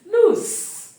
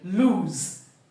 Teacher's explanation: but the middle we have the long ooh